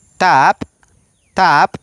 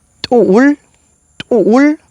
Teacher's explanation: el sonido de la T glotalizada suena de la siguiente manera. Le cortamos el sonido por la glotal que tiene.